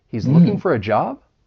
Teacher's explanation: Now, I'm going to have a rising intonation at the end.